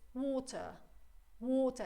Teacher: in standard British, it's water. Water, it's a long sound.